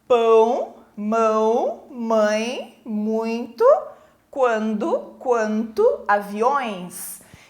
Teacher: Então esse som sai pela minha boca mas eu sinto ele também saindo pelo nariz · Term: ditongo nasal